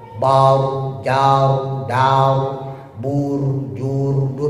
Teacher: ro yang domah atau fathah ya. Itu dia lebih cenderung monyong.